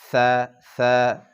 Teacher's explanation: সা আদায় করতে হবে জিহ্বার অগ্রভাগ সামনা এবং সামনের 2 দাঁতের অগ্রভাগ দিয়ে সা আদায় হবে, সা পাতলা করে, সা, সা।